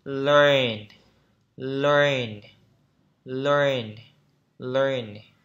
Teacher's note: Thế nên nó cong lưỡi là vì vậy. Thế nên chúng ta phải cong lưỡi lại.